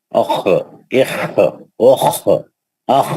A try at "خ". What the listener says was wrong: یہ دیکھیے ایک منٹ یہ دیکھیے، یہ جو خا ہے نا، یہ خلخلے کا حرف نہیں ہے، یہ خلخلے کا خا نہیں ہے، یہ حلقی خا ہے.